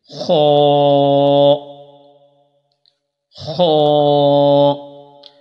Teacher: خا کو ایک تو پر کر کے پڑھا جاتا ہے، چونکہ خا جو ہے یہ حروف مستعلیہ میں سے ہے، اور اس کا مخرج یہ ہے کہ یہ حلق کے اوپر والے حصے سے ادا ہوتا ہے